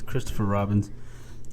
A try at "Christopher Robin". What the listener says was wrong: There's no S. It's Christopher Robin, Dick.